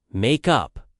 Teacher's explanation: The stress is on up in both meanings.